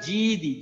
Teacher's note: জিব্বার তালু উপরে, একদম জিব্বার মাঝখান উপরে তালুর সাথে লাগে, ভারী হরফ।